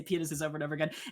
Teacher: oh yes, the emphasis is on the first syllable, right?